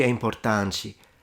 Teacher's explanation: So the T is pronounced like a ch because she says importante.